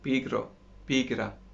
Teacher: it's just a hit of your tongue behind your front upper teeth